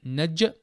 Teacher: Next, we have noon fatha, jim sukun naj, with a bit of qalqala on the jim